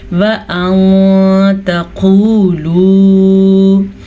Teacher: وَأَن تَقُولُوا، نون ساکن کے بعد تا حروف اخفاء میں سے ہے تو نون ساکن کو ہم چھپے ہوئے غنے کے ساتھ پڑھیں گے، اور واو مدہ 2 واو مدہ ہیں، دونوں کو کھینچ کے پڑھنا ہے۔